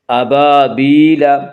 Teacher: الف مدہ کو ایک الف کے برابر کھینچ کر پڑھیں گے